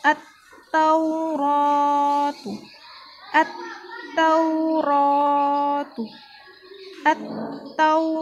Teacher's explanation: di sini ada fathah yang diikuti alif, maka kita baca panjang.